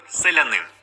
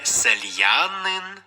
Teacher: наприклад селянин я - це лише а селянин не сельянин відповідно я в цьому випадку позначає один звук так як віддає свою м'якість попередній літері л